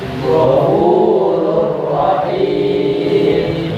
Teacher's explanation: suara ro yang berdumah tanwin itu nun matinya dimasukkan ke huruf ro yang kedua. Maka aslinya Ghafurun Rahimun menjadi Ghafurur Rahimun. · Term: idgham bila gunnah